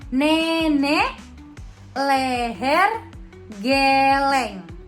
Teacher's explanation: e madia bawah depan dengan kondisi bibir semi terbuka